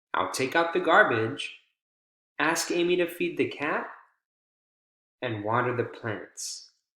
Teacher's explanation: we have a rise in pitch here with the strong syllable in the focus word, and then it continues to rise, right? At the end of the thought group to indicate that the person's still speaking, and then that last item, you want to make sure you have falling intonation.